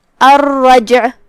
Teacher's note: جو کہ جیم پہ جزم ہے، یہاں جیم کا حکم ہے قلقلہ. قلقلہ کا معنی ہے حرف ساکن کو ہلانا، لہذا ہم جیم کو ہلاتے ہوئے یہ کلمہ کو پڑھیں گے، الرجع. آخری میں عین ہے، عین کی ادائیگی حلق کے درمیان والے حصے سے ہے، تو ہم عین کو وہیں سے پڑھیں گے اور اسے ظاہر کریں گے.